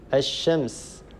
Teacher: من أمثلة الإدغام الشمسي كلمة الشمس، لاحظوا لم يبقى أثر للام، لا يصح أن نقول الشمس، هذا خطأ، اللام تدغم في الشين